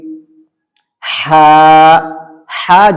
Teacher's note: ہا جو ہے بالکل درمیانی حلق سے نکالا جائے گا، اور آپ اپنا ہاتھ لے کر کے اس کو دبا کر کے اور ہا نکالنے کی کوشش کریں گے تو اس طریقے سے پریکٹس کرنے سے بھی لوگوں کا نکل جاتا ہے۔